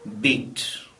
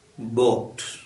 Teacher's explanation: the lips are in a flat shape for beat say the word boat you see that the lips are made rounder